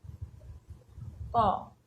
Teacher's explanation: জিহ্বার গোড়ার দিকে নরম তালুর পশ্চাৎ ভাগ স্পর্শ করে কিন্তু এই ক থেকে ও পর্যন্ত বর্ণগুলো উচ্চারিত হয়। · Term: ক বর্গ